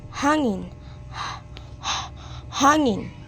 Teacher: Sa simula, hindi siya pumutok, hindi rin pailong. Puro hangin lang na dumadaan sa lalamunan. At ito ay walang tunog. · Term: pasotsot na glutal